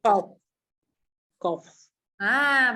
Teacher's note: Bila hujung tu ada angin qaf sebab dia huruf F kat hujung